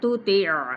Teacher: عین باریک ہے لیکن عین کو ضرور نکال لیں وسط خلق سے